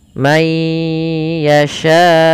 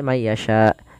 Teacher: Maka lafal yasya itu seminimal-minimal kita baca dengan empat harakat. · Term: mad wajib muttasil